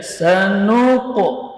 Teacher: Huruf sin shafir sughra, sa, ya, nun tawassut, qaf syiddah dan jar. Sanuqu, ini pantulannya tetap tebal, ya, karena qaf huruf tebal